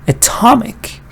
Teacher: look at this one Atomic now stress is not here so the first vowel is now a schwa you don't want to start with a anymore here you start